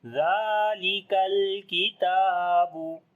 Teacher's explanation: This kaf again we read in light sound. Ta we long due to standing fatha on it.